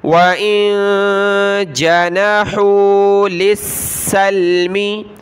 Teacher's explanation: نون ساکن کلرفل ہے، ناک میں آواز پیدا کریں گے. وَإِن جانا جیم زبر جا، نون زبر نہ، جانا ہا واو پیش ہو.